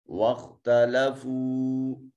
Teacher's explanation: خا جو ہے یہ حرف استعلاء ہے، صفت استعلاء ہونے کی وجہ سے اس کو مفخم ادا کریں گے۔ واو ساکن ما قبل مضموم واو مدہ ہے۔